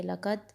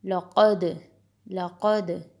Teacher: دال کے اوپر قلقلہ آپ نے کرنا ہے، آواز پلٹ کر آئے گی